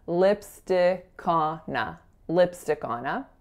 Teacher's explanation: In terms of linking, the K of lipstick is going to bop on over, so we're saying lipstick on, and then the N of on is going over to our next word, so lipstickona, lipstickona.